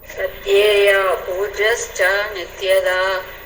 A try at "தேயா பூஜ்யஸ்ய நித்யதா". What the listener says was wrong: சா வந்து ப்ரீவியஸ் லைன்லேயே வந்துடும் மாதாஜி. தமிழில் அப்படி கொடுத்துருக்காங்க. தேயா பூஜ்யஸ்ய நித்யதான்னு படிச்சிருங்க. ஸ்ரோதவ்ய கீதிதவ்யஸ்ய அதுக்கு அடுத்தது தேயா பூஜ்யஸ்ய நித்யதா.